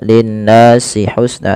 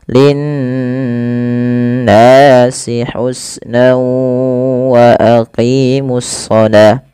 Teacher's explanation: Pada lafal nun berharakat tasydid itu wajib ditahan suara n ya. Nah, ini yang kita namakan dengan gunnah.